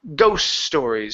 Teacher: because the T in ghost is surrounded by consonants, we have an S here and an S here, the T is not going to be pronounced. So we don't need to say ghost stories, it's just ghost stories.